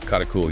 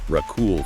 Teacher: the prefix for present continuous tense, usually ka in North Africa, often softens to ra here. So instead of karakul, you might hear rakul for you are eating.